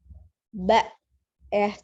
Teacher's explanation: ba-nya ada alif, tapi tidak dibaca panjang ba, karena langsung disukunkan ke hamzah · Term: hamzah sukun